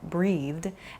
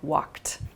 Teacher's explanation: a soft D sound like breathed, and then a more hard T sound like walked